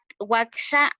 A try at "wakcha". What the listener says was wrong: Wakcha. Wakcha, como cha de chaqueta. Wakcha. No, en este caso es la che normal de Wakcha.